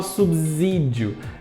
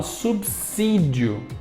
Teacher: esse s que tá ali não tem som de z tem som de s